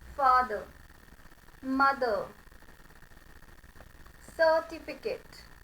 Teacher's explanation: जो ई है उसकी आवाज ए में चेंज हो जाएगी. सो द pronunciation becomes फादर, मदर, सर्टिफिकेट.